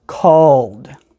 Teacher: That is a voiced sound. You can make it very loud. Because the sound is voiced, ed is going to make the D sound.